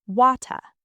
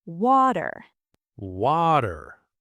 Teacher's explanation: When a T is between 2 vowel sounds, Americans don't say T, we say a very quick D. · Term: flap T